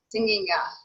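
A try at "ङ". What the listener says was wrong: Yeah, so it's not nya, it's nga. So there's a subtlety there, nga, okay?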